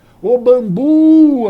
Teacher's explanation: O bambu, a sílaba forte é o bu